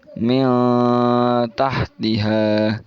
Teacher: Jadi agak disamarkan ke huruf taknya ya. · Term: ikhfa hakiki